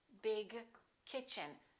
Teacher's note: g and k have the same point of articulation it happens back here let's try that your tongue is doing exactly the same thing